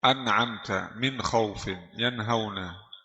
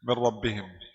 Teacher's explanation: Di an'amta suara nun jelas. Min rabbihim suara nun hilang.